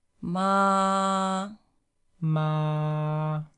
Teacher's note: the first tone is high flat